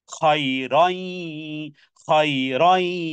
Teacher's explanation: এখানে ইদগামে বা গুন্না, তানবিনের পরে ইয়া এসেছে, ইয়া মিম নুনের চারটি যে কোনো একটা আসলে গুন্না সহকারে মিলিয়ে পড়তে হবে।